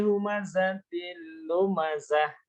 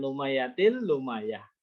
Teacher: Terus zai itu mendesis seperti suara lebah.